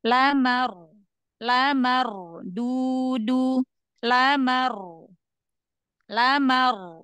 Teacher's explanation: ro sukun sebelumnya fathah dibaca tafim rnya dibaca tebal